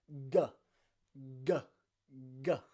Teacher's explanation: It's just the back of your tongue at the back of your mouth that stops the sound.